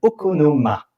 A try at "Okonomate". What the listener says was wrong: Voilà, Okonomate. On prononce T à la fin.